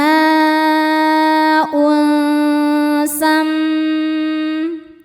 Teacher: Cara bacanya berdengung. Tahan dengungannya kurang lebih dua harakat. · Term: ghunah musyaddadah